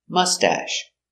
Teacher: Mustache. Put the accent on the first syllable.